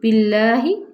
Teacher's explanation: اس کو اللہ کے لام سے پہلے زیر آ گئی ہے، ہم اسے باریک پڑھیں گے